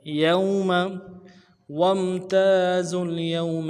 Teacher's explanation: یا کو واو کے ساتھ ملانا ہے، واو لین ہے، بغیر کھینچے پڑیں گے ، میم کو نرمی سے ادا کریں گے، یوم، وامتازوا اليوم